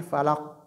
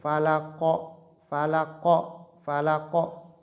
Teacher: Donc, les lettres, parmi les cinq lettres de Al-Qalqala. Donc, il faudrait que le point d'articulation, c'est-à-dire, se joigne et s'éloigne. Donc, il ne faut pas maintenir.